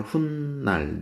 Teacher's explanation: 훗날 같은 경우 후 플러스 날 합성어 봤죠? 발음이 후날이 아니라 훗날 니은 소리가 덧나고 있죠